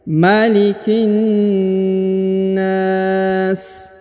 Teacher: huruf na dipanjangkan boleh 2, boleh 4, boleh 6 ya. Karena di depan huruf na terdapat alif.